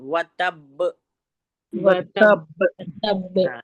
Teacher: ब जो है हुरूफ कलकला है। यहां पर हम कलकला करेंगे। कलकला के माने होते हैं डबल साउंड निकालना।